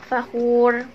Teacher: Nah, ini juga fakhur, belakangnya juga ro juga nih. Karena dia sebelumnya itu dhammah, maka ro-nya ini tebal, fakhur gitu.